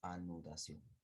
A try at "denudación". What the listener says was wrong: has dicho adenudación, has dicho denudación. Has dicho con la A, profesor.